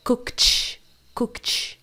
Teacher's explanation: o som do k não é vibrado